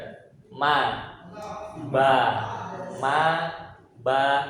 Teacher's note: khusus mim sama ba dua bibir tapi dengan cara merapatkan